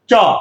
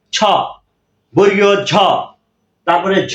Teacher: পুরো জীবের সামনের অংশ তালুতে লাগে · অগ্রতালু, তার মানে জিহ্বাটা, জিহ্বার সামনের অংশ পুরোটাই তালুতে লাগবে, এই জন্য বলা হচ্ছে যে অগ্রতালু। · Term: অগ্র তালুজাত বর্ণ